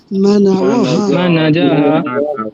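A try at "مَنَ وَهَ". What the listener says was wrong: জাহা কেন এটা ওয়াও না মানা ওয়াহা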